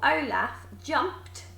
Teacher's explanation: It sounds like a t, even though it's ed, even though it's those same letters, it sounds like a t.